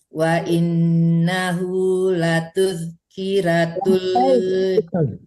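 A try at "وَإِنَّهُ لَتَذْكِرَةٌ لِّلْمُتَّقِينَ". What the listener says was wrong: Salah lagi, bukan latul, tapi latan.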